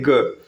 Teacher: आप देखेंगे ना स्वर यंत्र में थोड़ा सा वाइब्रेशन हो रहा है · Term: सघोष व्यंजन